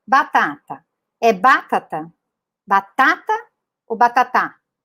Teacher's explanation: é como se ele tivesse que colocar o acento em todas as sílabas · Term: sílaba tônica